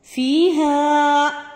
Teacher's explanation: یا مدہ بن جائے گی، ایک الف کے برابر لمبا کریں گے اس کو